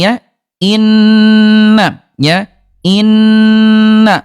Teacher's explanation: dengung ditahan dua ketukan lambat ketukan ketiga dia pindah